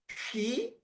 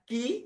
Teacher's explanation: ketika menyebutkan ki, itu ada nafas yang mengalir menyentuh tangan, telapak tangan. Nafas yang keluar itu ketika kita mengucapkan ki, itu disebut dengan hamas. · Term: hams